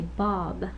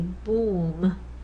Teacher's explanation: But there's minus nasal, plus nasal, so this is the tricky one, right? The plus nasal affects the vowel, which otherwise would be an oral vowel, and it makes it nasal. So now it becomes, over here with Bob, it's just oral, oral, oral.